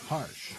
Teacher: But for English H, the place of articulation will be glottal.